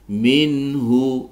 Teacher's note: nun sukun bertemu dengan ha dibaca izhar halqi